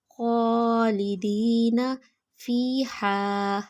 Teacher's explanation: ہا کی آواز حلق سے نکالیں گے